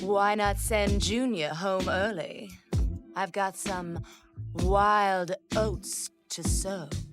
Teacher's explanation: definitely breathy, and incredibly smooth